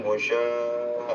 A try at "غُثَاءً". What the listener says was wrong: غشاء ഷീനാത് രണ്ടാമത്തെ അക്ഷരം. ഷീനൊന്നും അല്ലാത്, ഷീനല്ലത്, അതും അറബിയിലെ മൂന്നാമത്തെ അക്ഷരാണ്. നാലാമത്തെ അക്ഷരം സ ആണ്. സി സു.